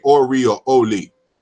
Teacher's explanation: in Yoruba, you could say Ori or Oli, because there's a liquid interchange in Yoruba in some dialects